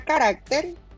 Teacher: pues la fuerza de pronunciación está en la penúltima sílaba